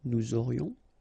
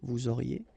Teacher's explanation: Nous aurions, final S not pronounced, and then you get this liaison, nous aurions.